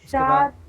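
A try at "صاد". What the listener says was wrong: شاد نہیں، دیکھیے شاد نہیں، ساد، ساد پڑھیے، ساد، سا سا ہے، سا سے نہیں، سا نہیں، دیکھیے ساد، ساد، ہاں تھوڑا موٹا پڑھنا ہے منہ کو بھر کر کے، ساد واو پیش،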